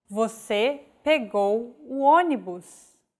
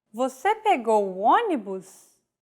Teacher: With a question mark at the end and a raised intonation.